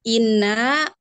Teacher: nun musyadadah, tingkatan gunahnya akmal matakun paling sempurna